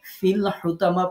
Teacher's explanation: পড়ার সময় আমরা ফাইয়াজের যে ছিল এই ইয়াটাকে বাদ দিয়ে দিয়েছি ইয়া সাকিনকে বাদ দিয়ে ফাকে লামের সাথে যুক্ত করে দিয়েছি এজন্য এখানে এখানে মাদ হবে না কিছুই হবে না ফিল হুতামা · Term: প্রথম সাকিন বাদ